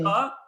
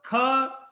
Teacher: Ka is just normal. Kha, when you say there is a air coming out of your mouth.